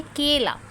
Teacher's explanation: तो थोड़ा सा हम ए को खींच रहे हैं। जब हम थोड़ा सा ए साउंड को खींच रहे हैं तो इसका मतलब वो हमारा दीर्घ स्वर है क्योंकि उसमें हम लंबा किसी भी स्वर को खींच रहे हैं।